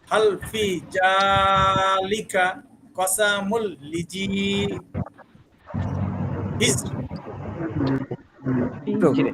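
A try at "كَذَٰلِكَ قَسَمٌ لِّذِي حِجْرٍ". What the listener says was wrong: হিজরি না হিজর, হিজরি ছিল, হিজরিন ছিল, হিজরে।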